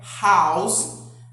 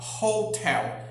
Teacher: ela vai ter ou o som de R glotal, que é esse R que sai aqui da glote